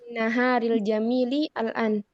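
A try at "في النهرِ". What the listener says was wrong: Fin nahri. Nunnya H-nya disukun ya. Fin nahri.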